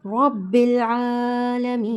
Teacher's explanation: یا مدہ کو ہم نے 2 کاؤنٹس کھینچ کر پڑھنا ہوتا ہے